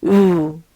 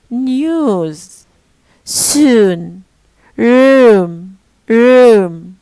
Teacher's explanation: So it's a high, back, rounded vowel.